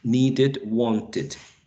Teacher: whenever we have this alveolar plosive, whether is t, a voiceless one, or d, a voiced one, as in need, right? Need. We need to add these extra syllable.